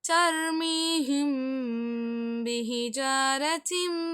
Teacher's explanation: சுக்கூன் செய்யப்பட்ட மீம்க்கு அடுத்து உள்ளதுக்கு குன்னா செய்யணும் · சுக்கூன் செய்யப்பட்ட மீமுக்கு அடுத்து பா வந்தால் நீங்க என்ன செய்ய வேண்டும்? பாதிய மறைச்சும், பாதிய மறைக்காமலும் ஓதணும். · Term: இஹ்ஃபா